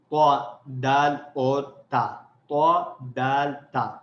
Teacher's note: یہ تینوں حروف زبان کی نوک کو اوپر کے سامنے والے 2 دانتوں کی جڑ سے لگانے سے ادا ہوتے ہیں · تینوں میں زبان کا فرنٹ کا حصہ استعمال ہو رہا ہے، بالکل ہماری زبان کی جو نوک ہے اسی کی ہیلپ سے یہ حروف ادا ہو رہے ہیں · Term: نوک کے حروف